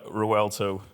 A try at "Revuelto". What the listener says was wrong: Revuelto. See, the silent V. Revuelto.